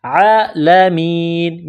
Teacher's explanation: عین کے اوپر کڑا زبر ہے، ایک الف کی لمٹ میں کھینچنا ہے، عالمین، میم کو یا کے ساتھ ملانا ہے، عَلَى الْعَالَمِينَ، جب اس آیت پر سٹاپ کریں گے، وقف کریں گے تو نون کو سائلنٹ کریں گے، وَأَنِّي فَضَّلْتُكُمْ عَلَى الْعَالَمِينَ۔